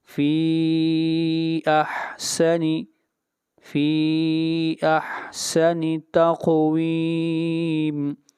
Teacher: فی کے اوپر مد منفصل ہے، اس مد کو بھی 3 الف کے برابر لمبا کریں گے۔ فی احسن، فی احسن تقویم، فی احسن تقویم، یہاں پر قاف کے اوپر قلقلہ ہوگا اور ویم کو کھینچ کر پڑھیں گے مد عارض وقفی۔